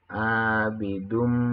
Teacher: mengandung hukum tajwid hunnah, ya. Hukum tajwid hunnah, dan cara membacanya ialah mendengung.